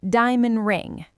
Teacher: The word diamond ends with a D. Ring starts with an R. That is a tough transition, so we delete the D.